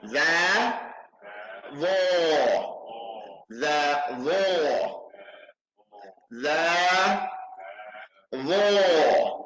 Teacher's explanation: The tip of the tongue going outside of the tip of the two front teeth. The tongue has to come outside the mouth.